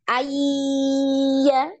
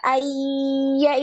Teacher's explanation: masih ada gunah ya ketika masuk di ya karena diidamkan langsung ke ya tapi masih ada gunahnya di hidung